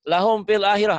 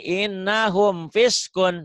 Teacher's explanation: Karena mim mati bertemu fa, maka hukumnya harus dibaca. Sangat jelas. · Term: Idhar syafawi